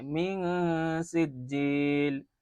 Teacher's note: نون ساکن کے بعد سین ہے، اور جب نون ساکن کے بعد سین آتا ہے تو وہاں پر ہم اخفاء حقیقی کرتے ہیں